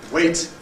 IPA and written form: weɪt (wait)